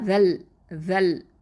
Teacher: இந்த இடத்துல லாம் இங்கே பார்த்தீங்கன்னா இது கமரியா எழுத்து. அப்போது இந்த ஜால் ஃபத்ஹா லாமோட இணைஞ்சிருது. அதுக்கு இடையில் இருக்கக்கூடிய ஹம்சத்துல் வசலை நம்ம உச்சரிக்க மாட்டோம்